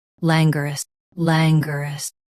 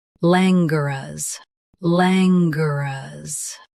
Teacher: US drops g. UK keeps g before ruz.